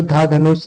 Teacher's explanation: दंत वत्स्य महाप्राण घोष व्यंजन का उदाहरण है